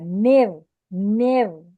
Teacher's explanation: نون کو جب آپ را سے ملائیں گے تو باریک ملائیں گے. نیو نیو را باریک ہے.